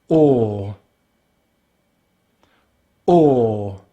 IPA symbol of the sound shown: ɔː